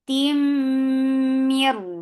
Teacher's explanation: For fatha open jaws, the sound is short. Tim, idgham with gunna. So keep the sound in your nose for a longer time.